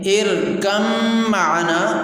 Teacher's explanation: یہاں پر یہ اصل لفظ ارکب معنا ہے، لیکن جب ادغام ہو گیا، با ختم ہو گئی، تو پھر یہ ارکم معنا ہو گیا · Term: با کا ادغام میم میں